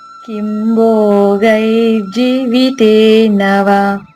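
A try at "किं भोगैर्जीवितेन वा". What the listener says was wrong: Very good.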